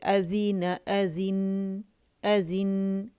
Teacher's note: partial flow होता है तो उसकी आवाज जो है दरमियानी चलती है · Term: तवसुत